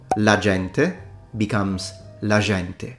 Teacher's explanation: Now, if you speak Italian with a Tuscan accent, something happens to the pronunciation of the soft G, specifically called a phonological alteration of the weakening of the intervocalic sound